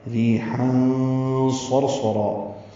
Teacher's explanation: را باریک، ری یا مدہ، حا وسط حلق سے ادا ہوگا، تنوین کے بعد صاد آنے کی وجہ سے اخفا ہے ، ریحا صرصرا، صاد پر ہے اور اس پر زبر ہے · کے بعد صاد آنے کی وجہ سے اخفا ہے، ریحا صرصرا، صاد پر ہے اور اس پر زبر ہے یعنی مفتوح ہے، اس کے بعد را ساکن ہونے کی وجہ سے را بھی پر ہے